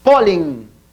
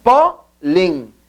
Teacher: a maior inflexão da voz está na penúltima sílaba e se acentua porque termina em N.